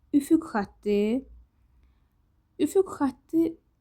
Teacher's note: üfüq sözündən sonra samitlə başlanan söz gəldiyinə görə bu K kimi tələffüz olunur da